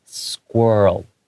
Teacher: the l the tongue comes out at the very end just briefly